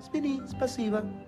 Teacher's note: en el sur, la S es como que es más suave, más delicada.